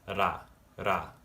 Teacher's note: This is ra, ra. In linguistics, this is called a tapped R. This is when you tap the roof of your mouth with your R sound.